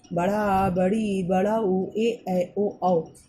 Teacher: दीर्घ स्वर, इनके उच्चारण में ह्रस्व स्वर से दुगना समय लगता है